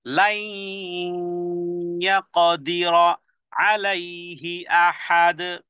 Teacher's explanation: আর লাই এখানে ইয়া মিম অনু চারটি অক্ষর, ইয়া নুন সাকিন, ইয়া নুন সাকিন তানবিনের পরে আসলে গুন্না সহ করে মিলেই পড়তে হয়। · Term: বাগুন্না